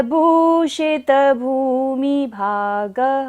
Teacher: विसर्ग है, तो हमें यहाँ पर सारी सांस का विसर्जन करना है और दोनों भा में बड़े उ की मात्रा है, तो भा को लंबा लेना है।